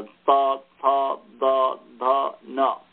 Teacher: पंचवर्णात्मक जो तवर्ग है यह दंत मूल स्थानीय है